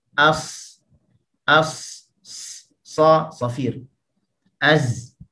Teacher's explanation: bagi suara yang keluar ketika menyebut biha dengannya, yashbihu safirut ta'ir, yang menyerupai bunyi siulan burung